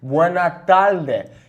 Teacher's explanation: He says, Buenas tardes, California. Because of his accent, he kind of cuts off the S's. He says, Buena tarde. · He also kind of turns those R's into an L sound, a very characteristic thing of Puerto Rican Spanish.